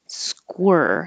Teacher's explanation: you have to round your lips even as you begin with the SK